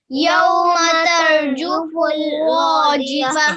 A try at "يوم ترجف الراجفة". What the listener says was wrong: हैवी करना है, ये रॉ को हैवी पढ़िए, मेक इट हैवी.